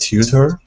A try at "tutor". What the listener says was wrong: So when you have that teeth in the middle of a word like that, it actually turns into a D sound in the American accent. So instead of saying tutor, it's tutor. sounds it's two instead of chew, it's two.